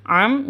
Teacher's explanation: mim dengan tashdid adalah ghunnah musyaddadah